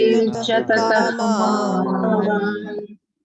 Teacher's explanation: you are pronouncing the visarga, which is not allowed here. That visarga can be pronounced only under very specific conditions.